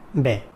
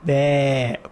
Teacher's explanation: Fatha is a part of alif. So when we pronounce it, we open our lips, but it's not as long as alif. So I say it's a part of alif.